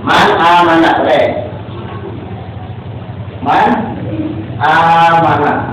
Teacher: Ini nun mati menghadapi huruf alif atau alif. Berarti kalau membaca nun matinya itu harus jelas man.